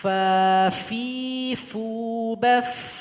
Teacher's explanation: huruf fa punya sifat hamas. Ada nafas atau angin yang keluar.